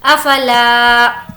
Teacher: لا کو کھینچیں گے، الف مدہ ہے